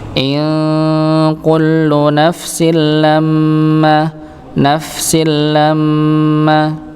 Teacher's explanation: tanwin bertemu dengan huruf lam maka dibaca tanpa adanya nya dengung langsung masuk